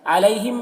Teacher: عمل اللہ کو پر پڑھنا ہے اور لام میں کھڑا زبر ہے جو الف مدہ کی طرح ہے۔ علیہم میں یا لین ہے، اس یا لین کو نرم آواز کے ساتھ جلد پڑھیں گے